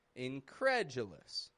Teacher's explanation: It peaks in the middle and it goes flat on the D, U. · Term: syllable stress